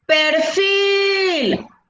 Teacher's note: la palabra entonces tiene la mayor fuerza de voz en la última sílaba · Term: sílaba tónica